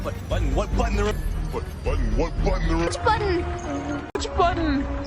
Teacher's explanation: منطقهاش باللسان، بنقفلها بالحنجرة كأنها همزة صغيرة كده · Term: glottal T